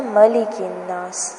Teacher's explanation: میم کو لمبا نہیں کرنا، مالک الناس نہیں پڑھنا